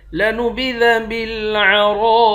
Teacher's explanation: را کو موٹا پڑھیں گے، ایک الف کے مقدار کھینچیں گے